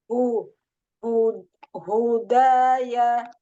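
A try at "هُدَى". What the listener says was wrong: Iya, tadi seperti pendengarnya, Ana mendengarnya seperti Hamzah udaya. Hu. Hu. Ya, dari bawah. Sama memang maksudnya dengan Hamzah.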